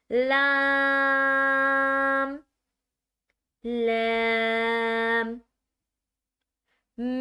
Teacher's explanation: اپنی زبان کو اوپر والے دانتوں کے نیچے لگا کر منہ کو آپس میں جوڑ دیا جائے گا، اس طرح لام کو ادا کیا جائے گا۔